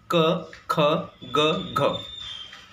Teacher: ह्या ठिकाणी तुमची जीभ, बॅक साईडची जीभ ही तुमची सॉफ्ट पॅलेटला टच व्हायलाच पाहिजे, तरच हे क ख ग घ हे कॉन्सनंट प्रोड्यूस होतात. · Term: व्हेल्युअर प्लेस ऑफ आर्टिक्युलेशन